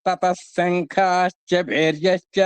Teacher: ఆ విసర్గల్ని సకారంగా చేసేసుకుంటే తతః శంఖాశ్చ భేర్యశ్చ అందంగా ఉంటుందన్నమాట. తతః శంఖాశ్చ భేర్యశ్చ, తతస్ అంటే సకారంగా మారిపోయిందన్నమాట.